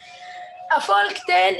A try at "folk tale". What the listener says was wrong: No, L silent. Okay, we can say folk tale.